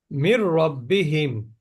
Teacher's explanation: নুন সাকিনের পরে র আসলে গুন্না ছাড়া মিলিয়ে পড়তে হয়